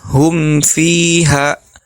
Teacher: ketika kita membaca hukum izhar ini mim sukun dan Nun sukunnya tidak ditahan atau dipanjangkan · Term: gunah naq